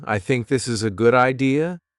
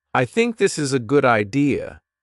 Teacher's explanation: let your voice fall at the end of the sentence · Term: falling tone